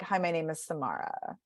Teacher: So pitch wise, it's going down, but also energy wise, it's pooping out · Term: vocal fry